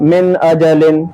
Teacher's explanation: اس میں بالکل صاف آواز رہتی ہے. من اجل، گننا بھی نہیں کرنا ہے، نون میں ناک میں آواز نہیں پہنچانی، جیسے من ایسے نہیں کرنا ہے، بالکل صاف. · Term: اظہار